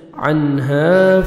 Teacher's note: عنها آگے ہا پڑھیں گے، ہا میں ساؤنڈ مکس نہیں ہونا چاہیے۔ الف مدہ 1 سیکنڈ ہم نے ہا کو کھینچنا ہے